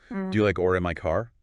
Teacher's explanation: Rise up to the question mark at the end of the phrase.